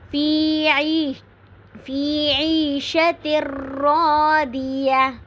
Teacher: تنوین کو ہم نے نہیں پڑھنا بلکہ تا کو ڈائریکٹ ہم نے را کے ساتھ ملانا ہے. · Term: ادغام بغیر غنہ